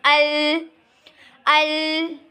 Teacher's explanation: लेकिन जब हम अल पढ़ते हैं तो हमारी ज़ुबान प्रॉपर दांतों के साथ अटैच हो जाती है, तो आवाज़ कहाँ से निकलेगी? आवाज़ अपना रुख चेंज कर लेगी और साइड से आ जाएगी, साइड से निकलेगी बाहर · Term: सिफते इनहेराफ, सिफ्ते इन्हिराफ